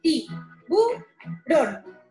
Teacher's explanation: en la palabra tiburón, la sílaba tónica es la última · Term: palabras agudas